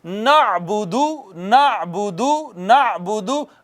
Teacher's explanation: आइन का मखरज वस्ते हलक है